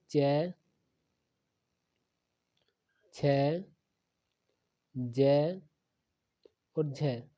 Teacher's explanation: च, छ, ज और झ, ये चारों स्पर्श संघर्षी व्यंजन होते हैं